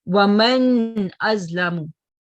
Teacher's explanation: That means this noon sound would be manifested very clearly. There will be no gunna sound. All right. Waman azlamu, not wama azlamu. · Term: izhar